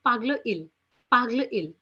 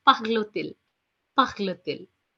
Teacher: people do pronounce the T sound there and it becomes parle-t-il, parle-t-il, which means does he speak?